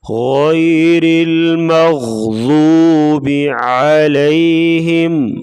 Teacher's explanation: یا ساکن اس سے پہلے زبر ہے تو یا لین ہوگی، اس کو نرمی کے ساتھ پڑھیں گے